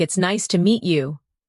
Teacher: The voice goes up slightly at nice and falls gently at you. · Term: rise and fall of the tone